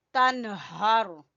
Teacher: नून साकिन के बाद हा है तो यहाँ पर कोई गुन्ना वगैरह नहीं करना, इसको जल्दी पढ़ना है, तनहर, ठीक है। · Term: इजहार